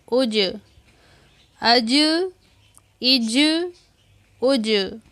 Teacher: حمزہ جیم زبر اج، یہ جیم حروف قلقلہ ہے، اس وجہ سے ہم نے اس کو ڈھیلا کر کے پڑھیں گے۔ حمزہ جیم زیر اج، حمزہ جیم پیش اج، اج، اج، اج۔